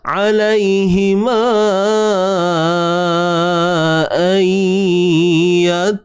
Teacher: Masukkan bunyi nun mati ke dalam ya secara tidak sempurna lah. Sebab kita takkan masukkan sempurna. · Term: idgham bi gunnah